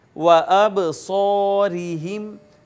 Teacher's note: لَذَهَبَ بِسَمْعِهِمْ وَأَبْصَارِهِمْ، یہاں بھی دیکھیے الف اور الف کا ما قبل مفتوح تو یہ الف مدہ ہے، را کے نیچے زیر ہے، اس کو باریک کر کے ہم نے پڑھا۔